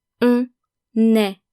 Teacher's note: we are pronouncing the N of on est, because est starts with a vowel. So basically, we're making the liaison.